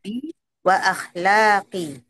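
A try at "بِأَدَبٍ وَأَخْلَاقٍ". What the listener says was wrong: Nah, bi adabin, nah, tanwin juga. Akhirnya baru tanpa tanwin.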